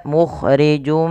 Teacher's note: yang kita namakan dengan bacaan Idgham bighhunah idgam artinya nya memasukkan bighunah Artinya kita menahan memasukkan suaranya kepada rongga hidung kita · bi gunnah artinya kita memasukkan suaranya kepada rongga hidung kita. Maka mukhrijum ma sambil ditahan. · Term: idgham bi gunnah